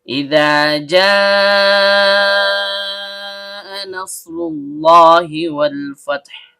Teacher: Nah, kalau kita memakai kaidah bahasa Arab, satu kalimat sama dengan satu kata. Maka terjadi hukum bacaan mad wajib muttasil. Panjang 4 harokat dan setiap panjang keluar dari rongga mulut.